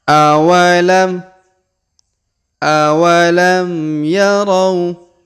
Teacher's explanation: Huruf ro kita ayun sekali karena di depannya terdapat waw sukun dan alif di depan waw tidak dibaca atau tidak dianggap.